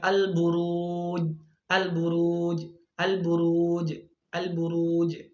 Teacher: Qalqalanya sangat kecil ya, atau bisa dikatakan itu qalqalah sugro ya · dia tidak memantulkan, dia tidak mengkolkolahkan huruf jim ketika sukun